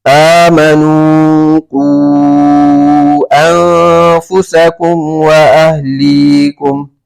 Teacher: واو مدہ ہو رہا ہے، واو مدہ کے بعد انفسکم کا حمزہ جو ہے دوسرے کلمے میں تو یہاں پر بھی مد منفصل ہوگا